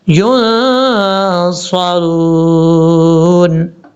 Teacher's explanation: نون کے بعد جو صاد ہے، صاد حروف مستعلیہ میں سے ہے، پر پڑھا جائے گا، اس کو بریک نہیں پڑھنا